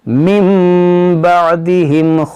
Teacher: کیونکہ نون ساکن کے بعد با ہے تو یہاں پر اقلاب ہوگا، یعنی اقلاب کا قاعدہ لگے گا یہاں پر، میم، اس کو میم پڑھیں گے، اس کو من نہیں پڑھیں گے